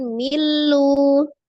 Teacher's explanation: Ada nun sukun ketemu dengan huruf lam. Itu hukumnya idgham bila gunnah. Ditasdid dengan tidak didengungkan.